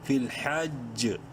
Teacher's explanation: مطلق کی علامت ہے، یہاں پر وقف کر سکتے ہیں، اور وقف کی صورت میں اس جیم میں قلقلہ ہوگا